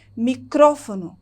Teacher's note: E no espanhol eu tenho a mesma palavra, só que a sílaba tônica do espanhol da palavra microfone está no cro, no ro